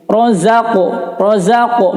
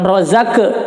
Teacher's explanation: Razaqo qalqalah sughra, ya, dibacanya karena qaf itu qalqalahnya adalah seperti mantulnya itu adalah seperti bunyi o, ya, sedikit. Razaqo bukan rozake, ya, tapi o.